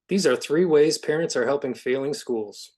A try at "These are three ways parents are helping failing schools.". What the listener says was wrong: I lost the three. It sounded like three ways was one word.